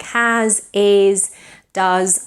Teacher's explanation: things like has, is, does, and so on, they end in a voiced Z.